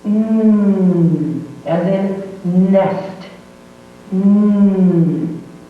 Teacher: the tongue goes up and touches that upper gum ridge. No air comes out of the mouth and it resonates in the nose.